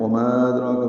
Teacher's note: وما ادراک ما سجین، وما ادراک، یہ الفاظ بہت جگہوں پہ ہیں۔ وما ادراک میم الف مدہ کے بعد حمزہ آنے کی وجہ سے مد منفصل ہے، وما 4 حرکات لمبا کریں گے۔ ادراک دال ساکن پہ قلقلہ ہے، را پر ہے، کھڑا زبر ہے، 2 حرکات لمبا کریں گے۔